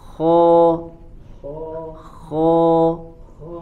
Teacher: masuk huruf istilla yang menghasilkan suara menjadi tebal · huruf kho termasuk huruf isti'la yang menghasilkan suara menjadi tebal ya. Kho. Nah, tapi ya dia yang terangkat bagian lidahnya hanya dari pangkal lidah saja ya. · dia yang terangkat bagian lidahnya hanya dari pangkal lidah saja ya. Adapun dari bagian ujung lidahnya itu berada di bawah.